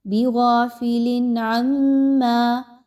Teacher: عین اگین جو ہے وہ اظہار کے حروف حلقیہ کے لیٹرز میں سے ہے، تو آپ نے یہاں پہ اظہار کا قاعدہ پڑھنا ہے، یعنی تنوین کی آواز کو بڑا کلیئر رکھنا ہے، غنہ نہیں کرنا. بغافل عما، عین اور میم کو آپس میں ملاتے ہوئے میم مشدد کا غنہ کیجئے، آواز کو ناک میں لے کر جائیے، ایک الف کے برابر روک کے رکھیے.